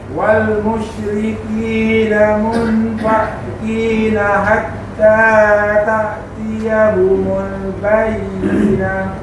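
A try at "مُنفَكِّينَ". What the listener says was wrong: Okey, masuk tu musyrikin namu fa masuk ka fakki fakki sekali wal bukan fa, dia bukan fa, fak. Fak masuk ka. Fak.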